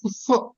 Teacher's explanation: ప తో ఫాలో అయ్యేటటువంటి అర్ధ విసర్గన్ని ఉఫ్ అని పలుకుతాము అది ఉపద్మానీయము అని అంటాం